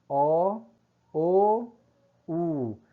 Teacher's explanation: As vogais também podem ser posteriores ou velares, né? A língua eleva-se em direção ao palato mole, que é o véu palatino.